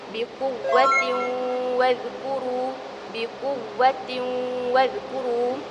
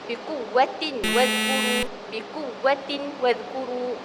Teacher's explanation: Apabila huruf nun mati ataupun er tanwin bertemu dengan salah satu yang saya sebutkan tadi, cara bacaan hendaklah dibacakan dengan dengung dengan kadar dua harakat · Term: idgham bighunnah